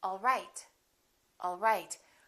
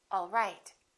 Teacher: For example, if I say, all right, I can say this as a statement, and I can say, all right, all right. My pitch goes down at the end for a statement, all right.